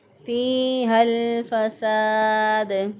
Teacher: फाजिल या फ़ी, या मद्दा है, या साकिन से पहले वाले हरफ के नीचे ज़ेर, एक अलिफ के बराबर इसको लंबा करेंगे